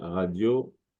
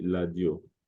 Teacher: En lingala, la lettre R se prononce L. Radio, on dit ladio.